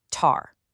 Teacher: If you put your hand right in front of your mouth when you say tar, you'll feel this little puff of air